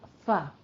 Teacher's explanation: نیچے والے ہونٹ کا شکم یعنی تری والا حصہ اور ثنایا علیہ کا کنارہ، اس سے ہمارے جو ہیں وہ نکلتے ہیں فا. ٹھیک ہے، ان چاروں کو مخرج کے اعتبار سے شفویہ کہتے ہیں.